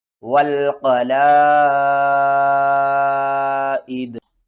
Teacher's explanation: دال کو ساکن کر دیں گے اور حمزہ کو دال سے ملائیں گے، دال کے اوپر قلقلہ کریں گے اور اس مد کو آپ نے 5 الف کے برابر کھینچ کر پڑھنا ہے۔ اس مد کا نام ہے مد متصل۔ · واو لام زبر ول، قاف زبر قا، والقا، لام الف مد زبر لا، حمزہ زیر ای، دال زبر دا، والقلائد، اور وقف کی صورت میں آپ کیا کریں گے؟ دال کو ساکن کر دیں گے اور حمزہ کو دال سے ملائیں گے، دال کے اوپر قلقلہ کریں گے اور اس مد کو آپ نے 5 الف کے برابر کھینچ کر پڑھنا ہے۔